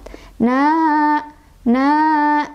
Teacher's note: Fathah berdiri itu pengganti dari alif dan fathah, fathah dan alif ya. Sehingga cara baca dari mad asli atau mad thobii ini adalah dipanjangkan sebanyak 2 harokat.